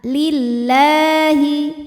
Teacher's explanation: lam pada lafaz Allah atau lam jalalah dibunyikan secara tarqik sebab huruf sebelumnya berbaris kasrah maka dibacanya tipis · La hukumnya adalah mad tabi'i muqaddar karena huruf lam berbaris fathah panjang, maka cara bacanya kita panjangkan lamnya ini 2 harokat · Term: tarqiq